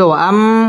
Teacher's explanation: ওয়াও ঠোঁট গোল করে উচ্চারণ করতে হবে